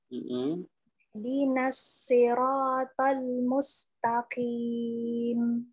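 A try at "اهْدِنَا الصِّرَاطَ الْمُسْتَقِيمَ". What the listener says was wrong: Baca Qur'annya jangan kayak ditekan-tekan setiap akhir ayatnya, karena ya kaedahnya tidak semua huruf sukun ataupun tasydid menekannya ditekan sekali ya. Yang harus benar-benar ditekan ketika dia masuknya huruf syiddah.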